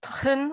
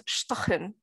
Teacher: something like tchen, which has second syllable stress, becomes shtchen, which is first syllable stress